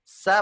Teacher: mepet ya mepet langit-langit ya ketika ngomong sa gitu ya sa posisi lidahnya tepi lidahnya mepet ke langit-langit nah udara kan berebutan keluar tuh Bu udara berebutan keluar melalui celah-celah sempit yang dibentuk oleh lidah kita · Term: sofir